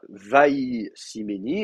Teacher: Le pronom suffixe va faire déplacer l'accent, va ici méni, et donc voilà, donc la voyelle va tomber sous le iode. On va avoir un schwa, vaï siméni, et donc comme je vous dis en plus comme c'est une semi-consonne, en général le dagesh va tomber.